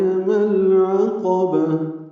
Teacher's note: میم کو العقبہ کے لام سے ملا دیں گے، اظہار قمری ہوگا، لام ساکن پہ اظہار قمری